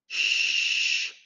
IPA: ʃ